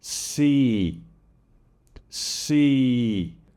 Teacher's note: Now, the long E, a classic word, si, si. It can be pronounced more of a pure vowel sound like you do in Vietnamese.